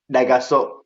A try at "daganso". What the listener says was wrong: daganso, daganso with an N, daganso.